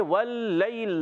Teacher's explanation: वल्लैल लाम मुशद्दद है, जरा रुक कर अदा करें।